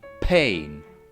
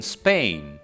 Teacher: Still today, some Germanic languages like English and German usually release air after a voiceless plosive. So after a p sound, you will also hear a h sound, like in pain. This doesn't happen if a fricative sound precedes the plosive, like in Spain. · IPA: [pheɪ̆n]